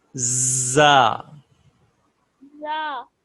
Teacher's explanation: زا میں وسل کی ساؤنڈ ہوتی ہے، آپ اپنے دونوں دانت بند کریں